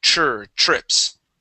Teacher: give me a CHR sound there at the beginning.